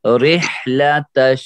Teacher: ہا جو ہے بالکل ہوا سے نکلنا چاہیے